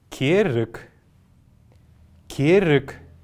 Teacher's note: неясный гласный кенрик повторяйте за мной керрик керрик вовремя заметили что последняя буква г произносится как к это тоже долгий фонетический процесс который происходил в калмыцком языке · Вы, наверное, заметили, что последняя буква «г» произносится как «к».